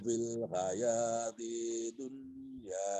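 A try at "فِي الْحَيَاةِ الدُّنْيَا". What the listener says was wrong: Ulangi lagi Pak, fil hayati dunianya. Fil hayatid, di situ ada tasdid, bunyikan tasdidnya Pak.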